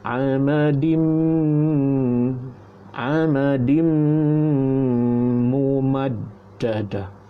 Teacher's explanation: amadin baris dua di bawah, masuk lepas tu jumpa dengan huruf mim, maka jadi idgham ma'al ghunnah. Jadi dengungkan amadim mumaddada.